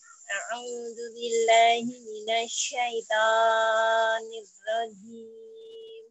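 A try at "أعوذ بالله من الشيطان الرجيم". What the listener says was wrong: Coba sekali lagi, Bun, kepanjangan pokoknya. Syaitonir rajim gitu aja.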